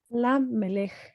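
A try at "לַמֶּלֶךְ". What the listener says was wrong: Exactamente.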